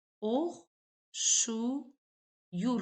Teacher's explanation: Oxşayır sözünün tələffüzündə bütün saitlər dodaqlanandır.